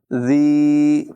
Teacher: ज़ाल में बग़ैर सीटी के अदा करेंगे।